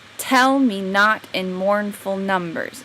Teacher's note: trochaic comes from having the stress on the first word of each pair